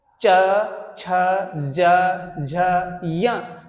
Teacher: जिभ्या ऊपर इस तालु से टच हो।